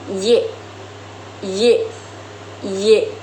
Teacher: Huruf Y dibentuk dengan menggunakan lidah dan langit-langit mulut serta menghasilkan suara yang semivokal atau disebut afroksiman.